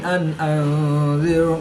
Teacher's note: نون ساکن کے بعد حمزہ حروف حلقی میں سے ہے تو یہاں پر نون ساکن میں اظہار ہوگا، یعنی نون ساکن کو ظاہر کر کے پڑھیں گے، غنہ نہیں کریں گے۔